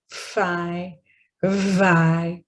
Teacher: my lower lip and my upper teeth coming together, but not quite so much touching, but they're coming together for the obstruction of air. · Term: labiodental